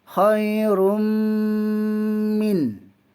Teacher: idgham ma'al gunnah, dengung dengan dua harakat. Khairum, dengungkan. · Izhar khalqi, dibaca terang, tak boleh dengung